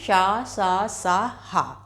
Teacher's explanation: इन व्यंजनों का उच्चारण करते समय हमारे मुख से गर्म हवा निकलती है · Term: उष्म व्यंजन